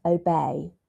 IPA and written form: əˈbeɪ (obey)